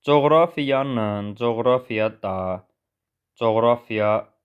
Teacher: Çünki coğrafiya sözündə vurğu ikinci hecəyə düşür